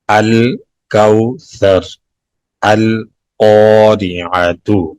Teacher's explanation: لام کو ظاہر کر کے پڑھیں گے، یہاں لام تعریف پڑھا جائے گا